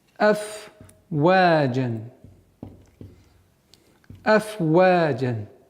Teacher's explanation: Так как в данной ситуации буква «фа» – фрикативный звук, то есть при произношении струя воздуха должна продолжительно свое действие влиять на произношение. «Афваджа». Нельзя его скоростечно произнести быстро «афваджа», чтобы она не переходила в другой звук.